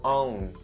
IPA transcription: əʊn